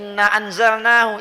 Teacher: nun mati ketemu zai, itu ikhfa. Itu ada bacanya agak disembunyiin. Ditahan